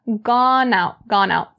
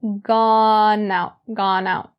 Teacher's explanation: The n in gone is brought over to out.